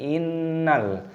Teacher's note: ini dibaca sebagai ghunah, dengan pengucapan sengau. · nunnya berharokat tasydid, ini dibaca gunna berdengung, kita dengungkan innal.